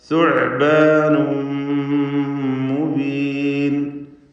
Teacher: സുഅ്ബാനുൻ എന്നതിലെ തൻവീൻ ശേഷം മീമാണ് വന്നിട്ടുള്ളത്. ഇത് ഗുന്ന കാമിൽ നൽകി ലയിപ്പിച്ച് മണിക്കുക. സുഅ്ബാനും മുബീൻ. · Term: ഇദ്ഗാം ബിഗുന്ന കാമിൽ